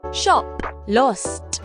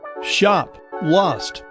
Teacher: In British English, words like shop and lost are pronounced with an open, rounded sound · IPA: /ʃɒp/, /lɒst/